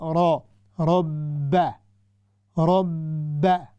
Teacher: रा हमेशा हैवी होती है जब उस पर फतहा आए